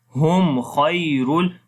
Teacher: Kha we read in heavy sound. There is a ya lean.